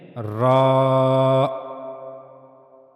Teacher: For pronouncing Ra, you have to use top of the tip of the tongue, and it will connect to the gum of the two top front teeth. These are the two top front teeth, and you have to connect the tip of your tongue to the gum here, not to the teeth.